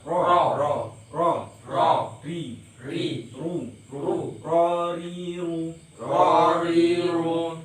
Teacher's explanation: bergetarnya ro itu bisa 3 atau 2 getaran, jadi tidak ro, jangan banyak-banyak kalau bergetar